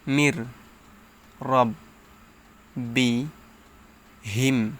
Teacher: ঈদগামে ব্লাগুন্না হয়েছে নুন সাকিনের পর পর এটা হচ্ছে নুন সাকিন নুন সাকিনের পর ইদগামে বেলাগুন্নাহর হরফ র আসছে এজন্য গুন্না সারা মিলে পড়িতে হবে